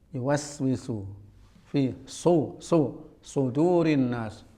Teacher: Sod, ini jangan terkejut ya, sejatinya sod itu bukan huruf yang dikeluarkan oleh bibir ya. Sod ini yang kerja adalah pojok lidah dengan sela antara gigi atas dan bawah ya. Tidak ada alasan untuk mencucu ketika mengucapkan sod.